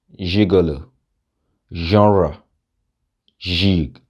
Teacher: To shi ma wannan sautin kaman sautin J ne amma kuma iskan ba a datse